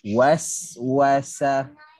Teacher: makhraj hujung lidah, belakang gigi bawah, kemudian ke arah senyum dan desiran. Okey. Dan kemudian apabila dia mati, maka ada hams dan rahawah, lepasan angin dan suara yang panjang. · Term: sin